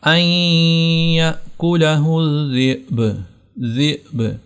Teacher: پہلا قانون یہ ہوگا قاعدہ کہ با کو آپ نے ساکن کر دینا ہے، اور دوسرا قانون آپ نے یہاں پر با پر قلقلہ بھی کرنا ہے